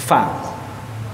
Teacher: F itu ada mahmusnya, ada keluar sedikit udara.